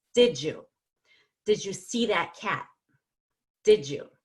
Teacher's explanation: can change the D plus Y to a J sound